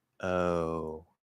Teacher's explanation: when Americans say oh, it kind of sounds like it starts in a schwa